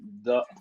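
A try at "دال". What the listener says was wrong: C'est pas Da. Ce n'est pas Da. Ce n'est pas ça. C'est Dal. Il y a une différence entre le Da et le Dal. Le Dal, c'est son nom. Elle s'appelle Dal. Mais lorsqu'on va mettre la fatha, on va dire Da.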